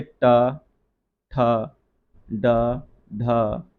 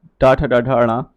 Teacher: मूर्धा से जो वर्ण का उच्चारण किया जाता है इसमें अक्सर हमारी जीभ टेढ़ी होकर ऊपर के दांतों की तरफ लगती है